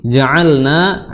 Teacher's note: makhrajnya adalah di tenggorokan pertengahan, ya, sama makhrajnya seperti huruf hamzah, ya, seperti huruf ha, ya, afwan.